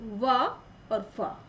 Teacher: दंतोष्ठ यानी निचले होठ व ऊपरी दांतों से व और फ